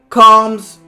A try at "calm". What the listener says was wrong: I think, yeah, that's punctuation, so that's calm. No, just calm, right? I thought that was just punctuation.